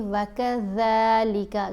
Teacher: جو زبان کی ٹپ ہے نا وہ اوپر والے دانتوں کو لگتی ہے، اور دانت جڑتے نہیں بلکہ زبان دانتوں کے بیچ میں رہتی ہے، سامنے والے، اوپر والے اور نیچے والے دانت. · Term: ذال